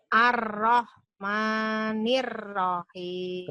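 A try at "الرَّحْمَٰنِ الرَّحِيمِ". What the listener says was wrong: Kembali lagi Bu. Ar-Rahman 2 aja. Mama. Ma-nya 2 kali aja.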